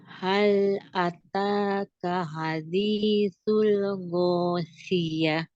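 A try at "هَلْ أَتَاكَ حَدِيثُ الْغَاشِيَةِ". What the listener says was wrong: Ghosyiyati rob. Kalau disambung, T-nya dibaca.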